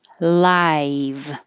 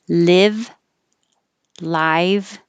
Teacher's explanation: i live so it starts low and rises